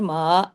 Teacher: میم کے ساتھ الف مدہ ہے، یہ بھی دو حرکات کھینچے گا، لیکن باریک ہی پڑھا جائے گا کیونکہ میم خود باریک ہے نا، یہ میم کو آواز دے رہا ہے۔